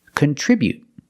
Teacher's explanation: Just stop the air with the tongue and don't release the t.